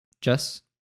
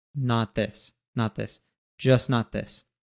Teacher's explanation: in just we usually will drop the T sound when it's followed by another consonant so instead of saying just and having aive T at the